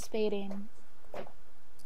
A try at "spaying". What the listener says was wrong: Spaying. There's no D.